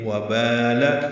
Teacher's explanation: واو ہونٹوں کی نا تمام گلائی سے ادا کریں گے